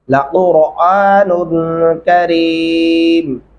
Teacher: قاف گلے سے ادا ہوگا اور را موٹا پر کر کے پڑھیں گے